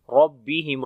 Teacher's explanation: را کو موٹا پڑھیں گے، با کے اوپر تھوڑی سختی ہوگی.